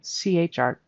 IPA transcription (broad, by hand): ʧɹ